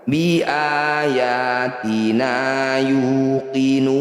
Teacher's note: Saya ulang, mad tabi'i bertemu huruf hidup dan dihentikan disebut bacaan mad arid disukun. Cara bacanya nu panjangkan 6 harokat, huruf terakhir sukunkan.